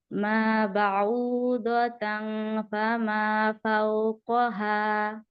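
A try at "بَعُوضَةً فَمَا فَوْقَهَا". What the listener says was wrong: গুণা করবেন না, ইকফার গুণাটা একেবারে বেবি গুণার চেয়ে ছোট হয়েছে। তারপরে আপনার গুণের সমস্যা, গুণা ছেড়ে যাচ্ছেন সমানে।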